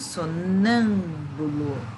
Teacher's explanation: Então, essa aqui é a sílaba tônica, ela é a antepenúltima sílaba. Então, a classificação é proparoxítona.